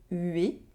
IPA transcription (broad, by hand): ɥe